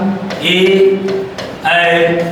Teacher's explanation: ए ऐ का उच्चारण स्थान होता है कंठ तालव्य होता है